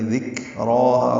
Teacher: ذکراہا را پر پڑھیں گے، کھڑا زبر ہے، 2 حرکات لمبا کریں گے